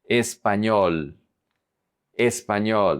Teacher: The emphasis is on the ñol syllable.